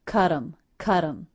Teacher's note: because the T now comes between two vowels, I turned that T into a flap or a light D sound.